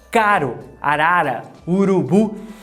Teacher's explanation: fazer um t ou um d tão rápido, mas tão rápido que ele se tornará o nosso R do português, como na palavra caro, arara, urubu. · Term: flap